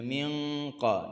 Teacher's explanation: Nun mati bertemu dengan qaf. Okey, dengun di sisi huruf qaf maksudnya tak boleh sentuh makhraj nun.